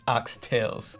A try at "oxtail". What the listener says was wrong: Oxtail, no S.